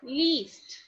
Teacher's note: while pronouncing this word the tongue is raising up and the lips are spread